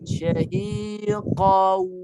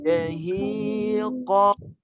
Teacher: Suara kat mulut ada keluar sebahagian dan sebahagian lagi di sebahagian hidung. Jadi cara dengungnya suara mulut keluar, suara hidung pun keluar serentak. Hidung dan mulut keluar dia punya bunyi.